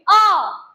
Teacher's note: तो मुख में वायु कहीं नहीं रुकती। सीधे गले से बाहर आती है। · मुख में वायु कहीं नहीं रुकती, सीधे गले से बाहर आती है अ। ठीक इसी प्रकार जब आप पूरा का पूरा का वर्ग बोलेंगे तो मुख में वायु का कहीं अवरोध नहीं उत्पन्न होगा, सीधे बाहर आएगी। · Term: कंठ